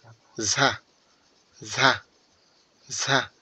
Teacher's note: অর্থাৎ ঝা যখন আপনি বলবেন এই যে ঝা অক্ষরটা যখন আপনি বলবেন তখন মনে হবে জিহ্বাটা আপনি ছুড়ে মারতেছেন। দাঁতের উপরে জিহ্বাটা আপনি ছুড়ে মারতেছেন এবং ঝিরঝির একটা আওয়াজ আসবে।